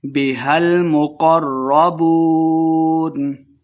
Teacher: را مشدد ہے قاف کو را کے ساتھ ملا کے پڑھنا ہے